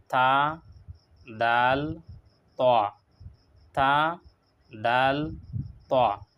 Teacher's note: জিহ্বার সামনের আগা আর সামনের উপরের দাঁতের গুড়ি এখান থেকে তা দাল ত আদায় করা হয়